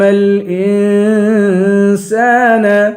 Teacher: این پہ اخفا کریں گے، سین کو ایک الف کے برابر کھینچیں گے، الف حروف مدہ ہے.